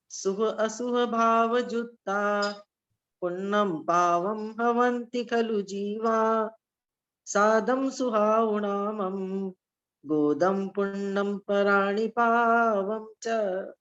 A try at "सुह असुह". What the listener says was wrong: पहला बस उच्चारण सुह अशुभ बोलना है। शुभ और शुभ अशुभ सुनाई दिया।